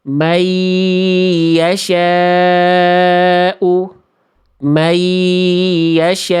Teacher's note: Enggak ada dengungannya. Itu cuman lebur dua harakat doang ya.